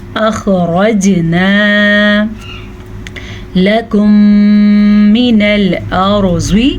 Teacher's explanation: میم ساکن کے بعد دوبارہ میم ہے تو دونوں میموں کو ہم آپس میں ملا دیں گے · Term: ادغام شفوی